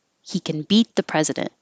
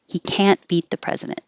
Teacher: And if it's the negative, it will sound like the positive can because you won't hear the T, but you'll know it's negative because it's emphasized and now the action is not emphasized